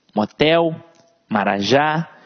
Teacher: veja que a tônica está sempre na última sílaba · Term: oxi tona